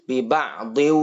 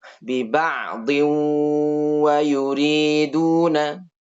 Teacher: Tanwinnya diganti wawu, kemudian wawunya ditasydid, dikasih dengung. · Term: idgham